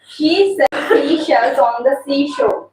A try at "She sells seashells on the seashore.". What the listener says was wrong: इसकी sounds correct है very good